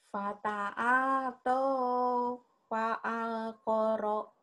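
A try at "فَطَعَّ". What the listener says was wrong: Pan pendek, Bu. Pendek semua ini mah, Bu. Yang ini mah pendek.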